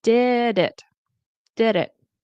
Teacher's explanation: because this ends with a consonant and the next word starts with a vowel, you can kind of let it just go together